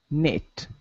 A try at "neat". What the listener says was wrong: More of an E sound. Neat.